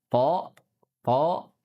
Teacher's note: di ujung lidah bertemu pangkal gigi dari atas